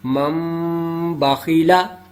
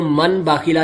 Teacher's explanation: مم باخیلا، اس کو من باخیلا نہیں پڑھیں گے، اس میں نون ساکن کو نہیں پڑھا جائے گا، میم کو پڑھیں گے